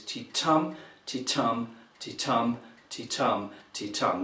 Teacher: Now, also, it's the metre of the poem is called an iambic pentameter, and that means that the metre is ti-tum, ti-tum, ti-tum, ti-tum, ti-tum. That's 5 stressed syllables and 5 unstressed before them.